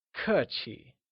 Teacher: Polite literally translates to 客气, where k is pronounced using a falling tone and chi with the neutral tone.